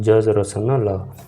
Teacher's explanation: दांत का मूल यानी मसूड़ा से बोलने वाली जो ध्वनियां होती है उनको को व्स व्यंजन या फिर मसूड़े से बोलने वाले व्यंजन बोलते हैं।